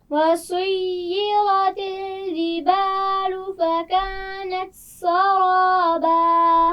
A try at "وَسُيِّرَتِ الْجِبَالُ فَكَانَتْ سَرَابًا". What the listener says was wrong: جیم کا مخرج واضح کیجئے. جبالو. پھر پڑھیے.